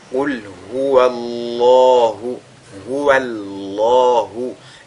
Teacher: Et donc, on a affaire ici à un cas de at-tafkhim, dont le lam du mot Allah est donc lu avec agrandissement